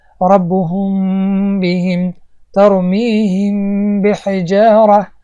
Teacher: یعنی اگر بعد از میم ساکن حرف با آمد، پس ما چیکار میکنیم؟ میم را اخفا میکنیم و کمی با دماغ میخونیم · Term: اخفای شفویه